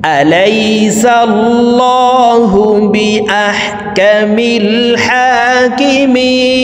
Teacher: মধ্যে আরজি 3 আলিফ টানিয়া পড়িতে হয়।